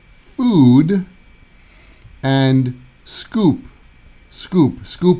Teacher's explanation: that's the O sound like a pure o sound and then we take the O and we make it longer and we do ooh